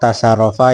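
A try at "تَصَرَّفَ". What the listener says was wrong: Tasorofa bukan tasa, pakai sod,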